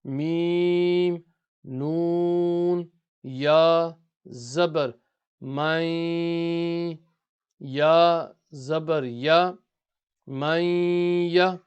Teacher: the sound of the noon will go into the nose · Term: nasalization